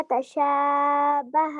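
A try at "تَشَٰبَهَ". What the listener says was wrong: تشابہ اس میں جو آپ کا یہ والا ہے نا اسٹینڈنگ الف, یا آپ کہہ لیں الف سا وغیرہ, یہ آپ کا تھوڑا سا لمبا ہو رہا ہے.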